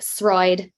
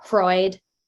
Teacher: if you had like Throid for street, you would hear Hroid for a lenited street